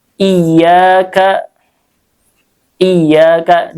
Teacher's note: tasydid itu ada hentakan di situ, karena sebenarnya tasydid ini 2 huruf ya, 2 huruf, yang satu berharokat, yang satu sukun.